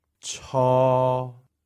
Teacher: This is a third tone. It starts from the middle and stays there.